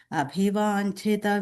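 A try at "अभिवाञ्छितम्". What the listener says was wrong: And the second line, abhivanchitam, there is a im sound which comes at the end there.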